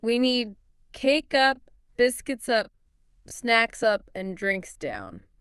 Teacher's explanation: You usually use rising intonation for each item until the very last one. The last one gets falling intonation to signal the list is finished.